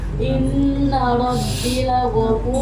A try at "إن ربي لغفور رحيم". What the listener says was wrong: Inna Rabbi, Robku, perjelas domir. Inna Rabbi lagafur.